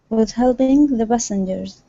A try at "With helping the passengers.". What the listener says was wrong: Oh, give me a good P instead of the pa. The pa. Nice and hard.